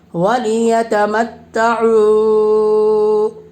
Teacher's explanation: واو ساکن سے پہلے پیش ہے، واو مدہ ہوگا، اس لیے واو مدہ کو 1 الف کے برابر کھینچ کر پڑھیں گے